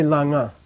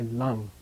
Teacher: when it becomes a suffix letter, its own a vowel disappears. You don't say langa, you say lang.